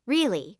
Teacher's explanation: If they say really with a flat tone, they are serious